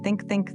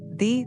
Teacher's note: Both sounds look the same. Your tongue goes between your teeth, the same position, the same place.